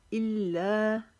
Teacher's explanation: इल्ला को एक अलिफ जितना लंबा खींचना है